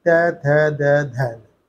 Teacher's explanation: हमारी जीभ जो है दांतों से आकर टकरा जाती है, जैसे त थ द ध, यानी कि जिस पार्ट से हमारी जिस शरीर की, कहना मतलब यहाँ से कंठ से लेके ओष्ठों तक, जो जहाँ पर थोड़ा सा स्पर्श होता हो या जीभ टकराती हो उसको उसी वर्ग बोलता है। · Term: दंत व्यंजन